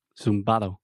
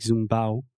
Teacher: zumbau zumbado so it's really fast it's almost like yeah exactly they eat the d sound